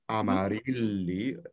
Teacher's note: And for the beginning, I believe it's clear, even though it's not the strong syllable, amarilli, the rilli is the strong syllable